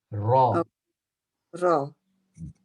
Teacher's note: so in the arabic language the ra has a vibration